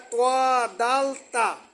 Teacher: জিহ্বার আগা সামনের উপরের 2 দাঁতের গোড়ার সঙ্গে লাগাইয়া উচ্চারিত